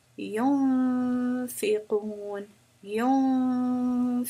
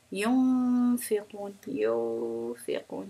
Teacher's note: My tongue is never going to hit the position, hit the roof of the mouth, because that would bring the noon sound in. That would bring idgham. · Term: Ikhfaa